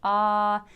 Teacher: we start out saying ah with our regular pitch, ah, and then we glide to as high as we can go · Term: voice glides